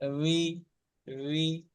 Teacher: বাসের বি একেবারে চেপে বলছি সেটা হবে না, আওয়াজটা শুধু হালকা হয়ে ওয়াজের উই, উই